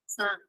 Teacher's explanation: Now bone has a falling contour